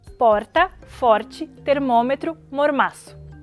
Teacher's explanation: é um som que a linguística chama de tepe